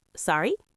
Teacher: With a rising tone, just sorry means please repeat what you said.